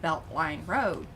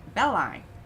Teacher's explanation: there's parts of dallas where like they don't really say t's